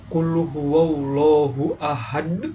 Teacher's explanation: huruf dal di akhir ayat dibaca wakaf sehingga dipantulkan dengan kuat